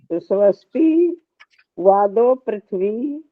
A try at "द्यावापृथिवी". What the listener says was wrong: द्यावा, क्या बोला आपने? द्यावा पृथ्वी। हाँ, द्या है ना, द्यावा पृथ्वी। पृथ्वी नी की मात्रा है ना दोनों में, ख में भी ग में भी। द्यावा पृथ्वी हम्म, थोड़ा सा ठीक करो उच्चारण।